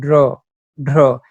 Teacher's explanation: এই ধ্বনিগুলো যেমন ড্র, ঢ্র, জীবের ডগার উল্টো পিঠের দ্বারা একাধিকবার দন্তমূলে আঘাত করে এই ধ্বনিগুলো উচ্চারণ করা হয় বলে এই ধ্বনিগুলোকে তারণজাত ধ্বনি বলে।